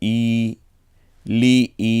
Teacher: জেরের পরে ইয়া সাকিন, এর জন্য আমরা এক আলিফ টেনে বলবো